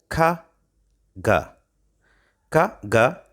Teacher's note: make the sounds and ka ka ga are velar that is the back of the tongue and velum are used to make the sounds now i'm going to show you how they are pronounced